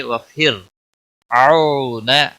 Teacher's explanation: را ساکن ہے، باریک پڑھیں گے